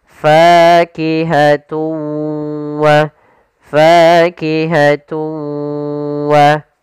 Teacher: suara tanwinnya kita masukkan langsung ke huruf waw dan kemudian kita tahan gunnahnya. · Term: idgham bi gunnah